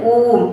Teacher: जब हम कहते हैं ओम तो ओ की ध्वनि को लंबा खींचते हैं। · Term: प्लुप्त स्वर